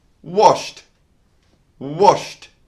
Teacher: The last sound before the ed is a sh sound, sh, which is voiceless. So we pronounce the ed as a soft t